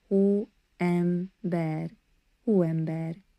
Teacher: with a soft H sound at the beginning and the E like in bed